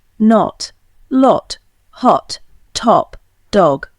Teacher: In England, this is still an open O, pronounced with the lips rounded and the tongue at the back of the mouth. In America, however, except in parts of New England, it has commonly lost its rounding and in most words has become a sound very similar in quality to the A in father, only shorter.